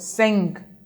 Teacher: The sound of N can hardly be heard in this word.